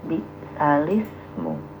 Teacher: Jadi harokat huruf hamzah dipindahkan ke huruf lam ya, ini untuk memudahkan bacaan ya. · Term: bacaan naqal